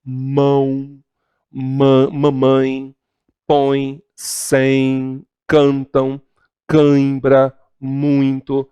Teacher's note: Esses sons, se você prestar atenção, eles saem simultaneamente pela boca e pelo nariz. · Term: nasal